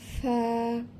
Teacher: জিহবার আগা উপরের দুই দাঁতের, সামনের দুই দাঁতের আগার সাথে লাগাইয়া নরম করে উচ্চারণ করতে হবে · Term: মাখরাজ